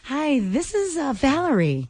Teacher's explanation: I feel like she's being very breathy.